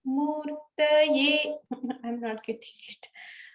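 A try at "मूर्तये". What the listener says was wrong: To me, that sounded all like the middle.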